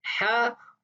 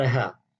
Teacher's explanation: ہا اور ہا یہ دونوں مختلف حروف ہیں، ان کی ادائیگی بھی مختلف ہے۔ ہا جو ہے وہ اقصی حلق سے ادا ہوتا ہے، اور ہا جو ہے وہ وسط حلق سے ادا ہوتا ہے